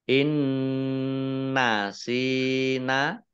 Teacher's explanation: nun sukun bertemu dengan huruf nun. Ini bacaan idgham bi gunnah, masuk dengan mendengung. Mendengung nun, ditandai nunnya ada tasdidnya.